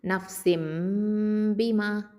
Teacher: நூனை வந்து மீமா மாற்றி ஓதணும் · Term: இக்லாபு